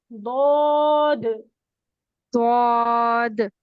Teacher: दौद में हम लोगों का होंठ गोल नहीं होंगे, फ्लैट ठीक है। रहेंगे, लिप्स लिप्स फ्लैट रहने चाहिए।